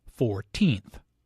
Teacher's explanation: The stress is on the second syllable, 14th.